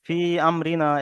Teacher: হরুফে মাদের পরে হামজা দ্বিতীয় শব্দের প্রথমে এসেছে, তাই একে মাদ্দে মুনফাসিল বলে। একে 2 থেকে 3 আলিফ পরিমাণ টান দিয়ে পড়তে হয়।